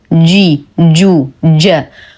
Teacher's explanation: الجيم دائما مخرجه مقفل احتكاك بسيط بين وسط اللسان ووسط الحنك الاعلى